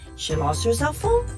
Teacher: the pitch of the word cell phone goes up to show that the speaker is surprised by the news